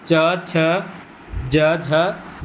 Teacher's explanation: तालु से उच्चारित होने वाली ध्वनि याद रखना च वर्ग